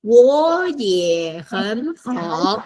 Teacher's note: it's 4 third tones. The first 3 become second. 我也很好. Last one is third 我 tone.